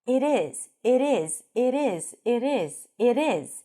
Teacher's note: If you aim for American English, the T sounds a little bit like a D. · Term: flap T